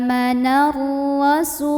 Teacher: karena roknya berbaris dan kita lihat barisnya itu vattha maka baunya dibaca ditebalkan dengan cara mengangkat bagian paling belakang dari lidah kita ya pangkal lidah · Karena alif lamnya bertemu dengan huruf syamsiyah yaitu huruf ra. Maka alif lam ini tidak perlu kita baca ya. Dari nun langsung masukkan ke ra atau diidghamkan. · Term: tafkhim, alif lam syamsiyah